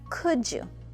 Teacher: l is silent we do not say cooled we say could when we use could and you together we combine the d and the y to pronounce the j sound